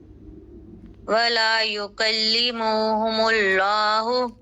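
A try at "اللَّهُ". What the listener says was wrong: لام اس میں جلالہ کو موٹا کیجیے، یکلمہم اللہ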